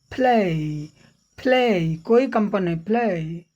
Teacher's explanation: ये हुआ फ, ल, जो आप तो ऐसे ल कंपन कर रहे हो, लेकिन यहाँ फ होने के नाते ल में कंपन नहीं हो रहा है। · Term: एल का अघोष रूप